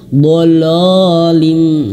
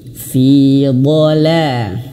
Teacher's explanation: huruf lam di sini jangan sampai terbawa tebal oleh huruf dod. Dod ini tebal d lam ini tipis.